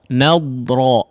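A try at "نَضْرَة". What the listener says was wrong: ya, di sini nadra ya, huruf dadnya jangan dipantulkan ya, huruf dad ya tetap dia mengalirkan suaranya di dalam lidah ya.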